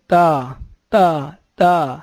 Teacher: تا جو ہے ادا کرتے وقت زبان کی نوک، زبان کا جو ابتدائی حصہ ہے جو سب سے زیادہ باہر ہوتا نظر آتا ہے، اگلے 2 دانت ثنایا علیا کی جڑ پہ لگے گا اندر کی جانب سے، تو نکلے گا تا تا تا۔